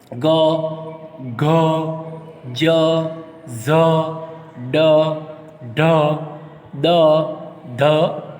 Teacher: નાદતંત્રી સહેજ વધુ કંપનની અવસ્થામાં હોય ત્યારે જે ધ્વનિ ઉત્પન્ન થાય તે ઘોષ ધ્વનિ કહેવાય છે